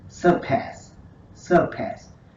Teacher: the stress is on the second syllable, the pass syllable, our key pronunciation word.